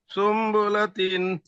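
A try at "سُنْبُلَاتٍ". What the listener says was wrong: সুম গুন্না হবে, সুম্বুলাতিন।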